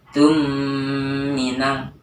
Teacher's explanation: Nah itu mim mati bertemu huruf mim cara membacanya itu panjangnya dua harakat atau sampai tiga tiga harakat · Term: Idam syafawi, idgham mislain